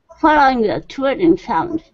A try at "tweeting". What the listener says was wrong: Almost. So give me a little bit more E. Tweeting.